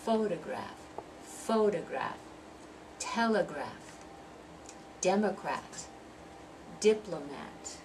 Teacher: They're 3-syllable words. The stress in all of those is going to be on the first syllable.